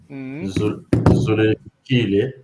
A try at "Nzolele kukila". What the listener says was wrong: Kunkile, attention le nasal, en tout cas.